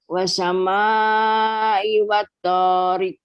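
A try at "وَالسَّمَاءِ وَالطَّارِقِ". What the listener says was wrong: Nah, yang pertama di huruf sinnya di situ ada tasydid, Bu ya. Dibaca wassama'i wat-thariq.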